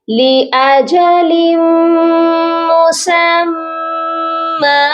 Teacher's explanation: تو آپ نے آخری حرف کو ایک الف کی مقدار لمبا کر کے پڑھنا ہے۔ ایک الف کی مقدار مطلب 1 سے 2 سیکنڈ۔